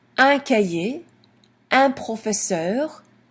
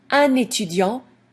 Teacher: when un is followed by a vowel sound, for example, étudiant, then we pronounce the N. Otherwise, we don't. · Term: liaison